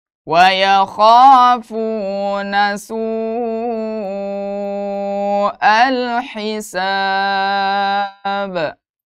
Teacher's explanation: Kenapa dipantulkan karena huruf yang disukunkan itu huruf Qalqalah maka kita harus pantulkan